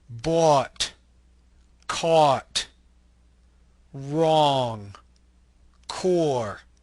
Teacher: This is a mid-back rounded lax vowel. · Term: open O